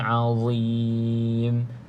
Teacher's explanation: pastikan huruf dha makhrajnya hujung lidah kena pada gigi atas bahagian depan, sama macam huruf za dan juga huruf tha.